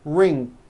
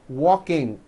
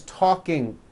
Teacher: adding a k release sound CK like that after an N ending for example in the